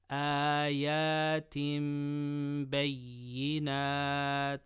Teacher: But because it's kasratain or tanween followed by ba, you do qalb. So instead of tin, you say tim. And then it becomes like ikhfa shafawi, so you do gunnah.